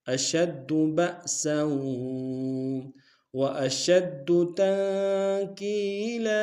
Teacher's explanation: تنکیلا میں نون ساکنہ غنہ کریں گے، کاف کو یا کے سامنے لیں گے، مدہ ایک ہندار میں کھینچیں گے، لام کے اوپر تنوین غنہ کریں گے، وقف میں لام کو الف سے بدلیں گے۔